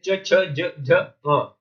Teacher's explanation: ये तालु का स्पर्श करते हैं, तालु। ट वर्ग, ट, ठ, ड, ढ, ढ, ये मूर्धा का स्पर्श करते हैं। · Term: चा वर्ग